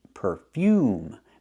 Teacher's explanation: put the stress on the second syllable perfume make the long u sound like uniform and unicorn u